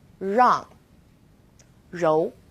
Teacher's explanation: It's quite similar to the R sound in run, but the R is a little softer. So try moving your tongue more to the back of your mouth